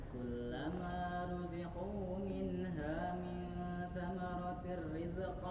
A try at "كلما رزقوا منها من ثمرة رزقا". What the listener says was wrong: Nah masih lepas. Masih lepas, masih rizq, masih ada bunyinya rizq, walaupun tidak terasa itu kedengaran betul oleh itu.